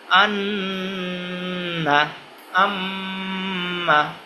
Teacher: 17 নম্বর মাখরাজ, নাকের বাসি হইতে গুন্নাহ উচ্চারিত হয়